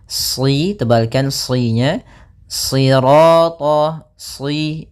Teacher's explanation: di sini shadnya tebal, jangan dibaca dengan huruf sin. Ya, meskipun nanti ada riwayat lain membaca dengan sin, tapi kita membaca dalam riwayat Imam Hafs dengan shad, ya.